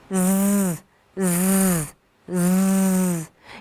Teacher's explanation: You will feel vibrations in the neck. That's because it's a voiced sound. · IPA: /z/